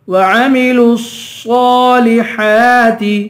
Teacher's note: وعملوا الصالحات صاد کو پر پڑھیں گے، ہا پہ کھڑا زبر ہے، اسے ایک الف کے برابر کھینچ کے پڑھیں گے. صاد کو بھی ایک الف کے برابر کھینچ کے پڑھیں گے، صاد کو پر بھی پڑھیں گے. ہا پہ کھڑا زبر ہے، ہا پہ بھی ایک الف، ہا کو ایک الف کے برابر کھینچ کر پڑھیں گے.